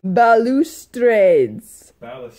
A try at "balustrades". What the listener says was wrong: Balustrades. Okay, balustrades.